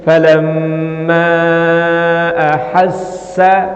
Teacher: Maksudnya Jaiz itu boleh itu dibaca Dua harakat atau sampai dengan empat harakat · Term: munfasil